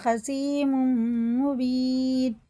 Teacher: تنوین کے بعد میم آ رہا ہے تو غنہ کر کے پڑھیں گے